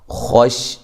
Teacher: خا کو موٹا، شین کو ادا کرتے ہوئے آواز منہ میں بھر جاتی ہے